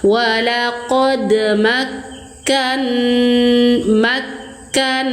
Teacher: Naikkan suara tekan. Tekan dan naikkan suara. Makkan nun bertasydid gunah musyaddadah atau wajibulah.